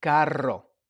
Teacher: So I'm breathing from the diaphragm. I'm relaxing the tongue and I'm just breathing out and rolling the tongue. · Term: double R